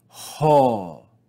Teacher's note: Here we see the vowel omega, the uppercase omega with rough breathing or aspiration. We're going to read this with the sound ho